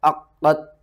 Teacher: آپ نے قاف کو تا کے ساتھ ملانا ہے، تا کے اوپر سختی کرنی ہے، قاف کو بھی ہم نے 2 بار پڑھنا ہے، قاف کو موٹا کر کے پڑھنا ہے، اور قاف کے اوپر بھی سختی کرنی ہے۔